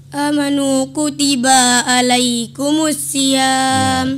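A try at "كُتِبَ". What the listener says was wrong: Ya, kutibanya pun salah, harus pendek ya. Kutiba salah 2 kali, amanu salah.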